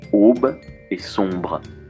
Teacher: le simple rapprochement de voyelles arrondies O et on, suivi d'un B